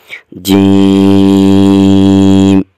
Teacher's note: زبان کا درمیان اوپر کے تالو کے ساتھ لگ رہا ہے